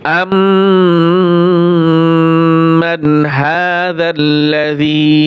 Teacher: হামজা মিম জবর আম, এখানে ওয়াজিব গুণনা হবে